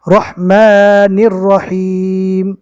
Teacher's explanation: تشدید والی رو کے اوپر زبر ہے، اس لیے تشدید والی رو پور ہوگی